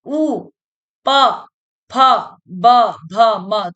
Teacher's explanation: ओष्ठ, होठों से जो टकराती है, जैसे कि ऊ, होठ भाई पास आ रहे हैं, बोल रहे हैं, तो होठों का प्रयोग कर रहे हैं, ऊ, प, फ, ब, भ, म, तो ये ओष्ठ्य वर्ण हैं जिनको हमें बोलने के लिए हमारे होठों का प्रयोग किया जा रहा है